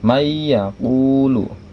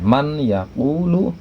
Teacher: memasukkan huruf ya ke dalam nun mati atau ke dalam tanwin, maka seolah-olah nun matinya hilang berganti dengan ya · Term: idgham bunah, idgham bigunnah